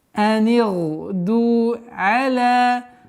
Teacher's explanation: Долгота в размере двух огласовок. Удлиняем фатха над буквой лям. Хар. Ра у нас твердо здесь.